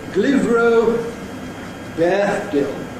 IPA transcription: g.l.ɪ.v.r.əʊ b.eə.θ.d.ɪ.l